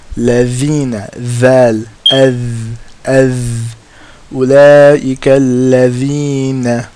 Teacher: front tip of the tongue touching the sharp part of the top front two teeth